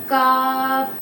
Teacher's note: زبان کی جڑ اوپر کے تالو کے سخت حصے سے مل کر ادا ہوتا ہے۔